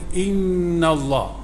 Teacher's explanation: nun bertasydid wajib guna dengung